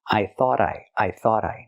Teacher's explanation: I thought I said. We hear the T in thought at the end pronounced as a fast D because it's between vowels phonetically.